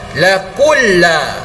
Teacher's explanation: huruf qaf pada kalimat laku ini harus dimasukkan ke dalam huruf lam yang bersabdu.